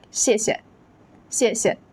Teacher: Notice that the second syllable is usually light and unstressed